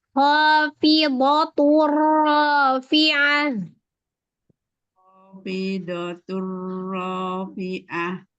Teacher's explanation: Tebalkan do-nya, ho-nya tebal.